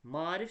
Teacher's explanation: Eyni qoşa saitlərdə qoşa saitlərdən biri düşür, o birisi uzun tələffüz olunur. Məsələn, a-ın biri düşəcək, digəri uzun tələffüz olunacaq.